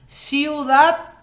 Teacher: hay una secuencia de dos vocales en la misma sílaba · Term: diptongo